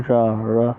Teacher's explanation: इनके उच्चारण जीभ बेलन की भाति लपेट खाती है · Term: लुंठित व्यंजन